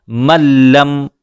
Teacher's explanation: نون ساکن کے بعد لام ہے، ملاتے ہوئے ہم نے یہاں غنہ نہیں کیا۔